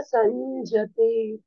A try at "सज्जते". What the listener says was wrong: इति मत्वा न सज्जते, संजते नहीं है, अन का है, ऊपर बिंदी है। सज्जते, आधा ज पूरा ज, सज्जते।